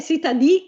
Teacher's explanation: È cittadì, diventa tronca in bergamasco